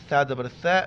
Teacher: ثا کے وقت زبان باہر نکالنا ہے